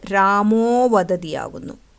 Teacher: വിസർഗത്തിന് മുൻപ് ആ എന്ന സ്വരവും ശേഷം ആയോ ഏതെങ്കിലും മൃദുവ്യഞ്ജനങ്ങളോ വന്നാൽ വിസർഗം ഊ ആയി മാറുകയും മുൻപിലത്തെ ആയുമായി ചേർന്ന് ഓ ആയി മാറുകയും ചെയ്യുന്നു. അങ്ങനെ വിസർഗം ഓ ആകുന്ന ഈ സന്ധിക്ക് ഉത്വസന്ധി എന്നാണ് പറയുന്നത്.